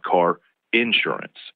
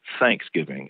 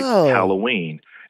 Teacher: in certain parts of the south we put a lot more stress on most of initial syllables